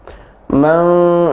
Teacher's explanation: Fa amma man, ya, fa amma man, maknya 2 harakat, kemudian man ditahan 2 harakat dan didengungkan